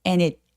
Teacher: 그래서 and라고 굳이 과하게 발음하지 않고 뒤발음 없이 그냥 N 아주 가볍게 발음하도록 합니다. 근데 그 바로 뒷따라오는 단어가 모음으로 시작하고 있어요. 그러니까 연음에서 and it need처럼 연음하시는 거예요